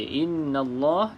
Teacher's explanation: Nun yang bersabdu maka kita baca dengung dua harakat